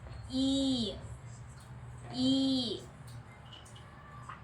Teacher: The front of your tongue is raised over the hard palate, and your lips are spread.